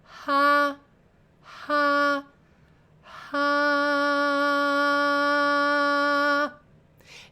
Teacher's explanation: start them with a little glottal fricative. Start them with a little H in the front.